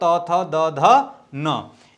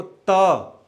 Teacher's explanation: त वर्ग का उच्चारण स्थान दंत होता है। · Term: दंत्य